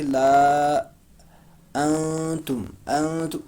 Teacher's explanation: نون کی آواز چھپائیں گے، ہم پڑھیں گے لا انتم، انتم، ان نہیں پڑھیں گے، انتم پڑھیں گے۔ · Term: نون ساکن